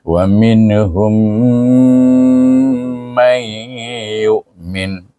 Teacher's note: Wa mim pula bertemu dengan mim, maka hendaklah dibaca dengan idgham syafawi ataupun dipanggil idgham mislain shaghir dengan dengung 2 harakat